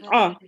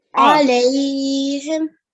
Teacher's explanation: Try to make that ayn come from your throat.